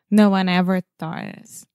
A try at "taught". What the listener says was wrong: Taught Yeah, a lot of times, I'm not sure why you want to put a TH in the beginning of the word. Yeah, it's just taught.